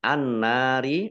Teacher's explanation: dibaca langsung masuk ke huruf nun ditandai dengan nunnya ada tasdidnya Nun tasdid dibaca ghunah atau mendengung ditahan dua harakat